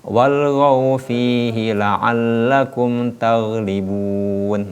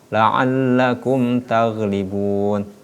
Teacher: Mim sukun ataupun mim mati ketemu dengan huruf ta, maka itu tidak boleh didengungkan. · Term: izhar syafawi